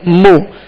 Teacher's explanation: میم پر پیش ہے، ہونٹوں کو گول کر کے بغیر کھینچے بغیر جھٹکا دیے معروف طریقے سے ادا کریں گے